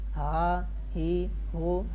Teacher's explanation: حلق کے نیچے والے حصے سے ادا ہوتا ہے